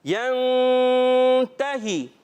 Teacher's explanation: غنہ کریں گے اخفا کا, غنہ یعنی ناک میں آواز لے کے جائیں. يَنْتَهِ, ایک الف کا غنہ کرنا ہے.